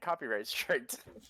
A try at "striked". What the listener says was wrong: No, striked was right, but you said strict.